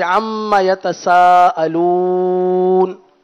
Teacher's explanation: یہ مد عارض ہے، اس کو آپ 3 الف تک کھینچیں